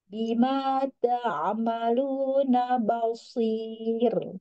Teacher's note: sodnya tebal tapi ro-nya tipis. Bima ta'amaluna basir, tapi ujungnya tipis.